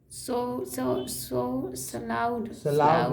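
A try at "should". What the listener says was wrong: नहीं, L silent है, L silent है, शुड क्या बोलेंगे, अगर एस एच की जगह डब्ल्यू लिख देंगे तो क्या बोलेंगे,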